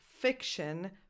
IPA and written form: ˈfɪkʃən (fiction)